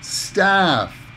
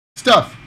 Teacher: Notice the vowel sound. The ah in staff, it's a long sound. Staff. But that's my stuff. Stuff. The sound is very, very short.